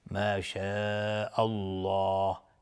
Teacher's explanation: قلت ما شاء الله، مد واجب متصل به مقدار 4 تا 5 حرکت وجوباً مد میخواد. لفظ جلاله اینجا تفخیم هست چون قبلش فتحه اومده. میگیم ما شاء الله، نمیگیم ما شاء الله.